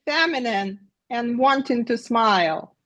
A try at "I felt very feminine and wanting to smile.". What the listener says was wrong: Let's slow it down and let's not be 40 times louder. But let's find the hub of the voice one more time. Here I'm lower in your voice.